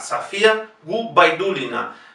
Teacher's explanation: la O en Safía no es la sílaba tónica, por lo tanto se pronuncia igualmente A.